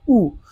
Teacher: हमारा ओठ देखिए एकदम गोल हो जा रहा है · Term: वृत्त मुखी